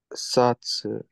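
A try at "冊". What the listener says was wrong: Perfect.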